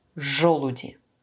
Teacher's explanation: Parce que dans ce cas-là, avec la lettre j, on ne peut pas prononcer de manière molle. C'est toujours dur.